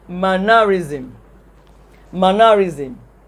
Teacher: mannerism has the primary stress on the first syllable